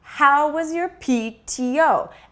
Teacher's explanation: notice that the non-stressed words like was your are very very small